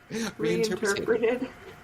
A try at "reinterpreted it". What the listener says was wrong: But there's an it at the end. Reinterpreted it.